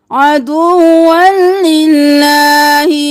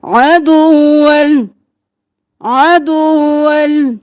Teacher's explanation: واو کو بھی 2 بار پڑھنا ہے, لام کو بھی 2 بار پڑھنا ہے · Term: تشدید